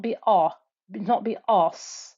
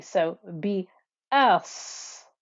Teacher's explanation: Make sure the sad is thick and heavy, but make sure that the hamza isn't.